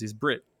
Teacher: like like brett from fly the concords is brit you know they call him brit because the e becomes i